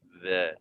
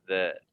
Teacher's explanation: Okey, baik. Za, ingat zal zal kecil. Maksudnya kena keluarkan lidah sedikit.